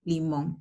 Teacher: Limón, una palabra aguda porque la mayor fuerza de voz está en la última sílaba y termina en N.